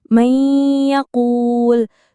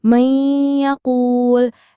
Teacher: Itu kan nun sukun ketemu ya. Jadi bacanya ditahan dengungnya. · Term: idgham bigunah